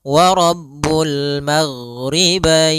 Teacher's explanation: ghain adalah sifatnya rokhawah. Rokhawah itu mengalirnya suara, sehingga tapi tidak ada nafas kita, tidak enggak, tapi dia wa Rabbul maghribain.